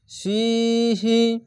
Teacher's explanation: জেরের পাশে ইয়া সাকিন 1 আলিফ টেনে পড়বেন।